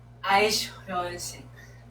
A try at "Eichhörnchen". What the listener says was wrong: Don't say sh. Eich. Eich. Hörnchen. Eichhörnchen.